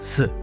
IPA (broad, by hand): ɕ